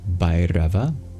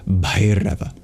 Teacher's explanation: an H indicates an extra breathy sort of sound